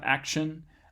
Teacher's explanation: This is kind of similar as a T at the end of act, but it turns into more of a sh sound, action, when you add an ion to it.